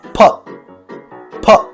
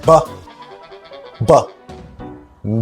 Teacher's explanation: we can say that P and B are a pair of consonants that differ only by their voicing